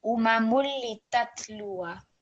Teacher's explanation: don't make any vibration or any jerk on the tat